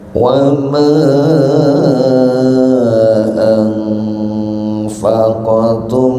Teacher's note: didengungkan karena mim mati bertemu bacaan idgham ya